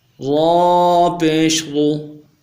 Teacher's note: را پیش رو، را کو موٹا پڑھیں گے، پر پڑھیں گے اور پیش کی شکل میں ہونٹوں گول کریں گے۔ را پیش رو ملائیں گے۔